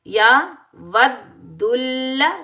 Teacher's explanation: मद्दा एक अलिफ की मिकदार में खींच कर अदा करेंगे